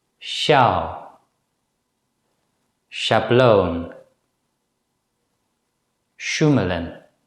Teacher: the Dutch consonant sh sounds similar to the consonant in the English word ash, but the lips are slightly less protruding when the Dutch consonant sh is pronounced.